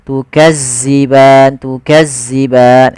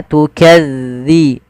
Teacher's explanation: Tukadziban, pada lafal zal hati-hati ya teman-teman, jangan sampai dibaca dengan zai, jangan tukadziban. Sering terjadi yaitu mengganti huruf zal dengan zai